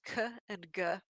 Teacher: to be because ka and ga are what we call vealers they're pronounced with the back of your tongue raised up towards the roof of your mouth